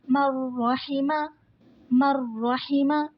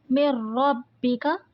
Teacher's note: نون ساکن کے بعد را آ رہا ہے تو یہاں پر ادغام بلا غنہ ہوگا، غنہ کے بغیر پڑھیں گے۔ نیکسٹ ہے من ربک، نون ساکن کے بعد را آ رہا ہے، ادغام بلا غنہ ہوگا۔